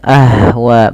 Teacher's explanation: memantulkan Ha ah ah gitu ya Ah Wa gitu ya padahal dia enggak enggak boleh mantul harusnya Ahwa mengalir nafasnya Kemudian pada lafal wa sendiri ada bacaan mad wajib muttasil yaitu